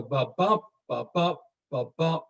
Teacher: The emphasis is on the second beat. There are 10 syllables. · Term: iambic pentameter